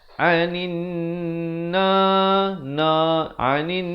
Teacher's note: Anin na anin, dengungkan dulu 2 harakat. Wajibul gunnah. Na 2 harakat.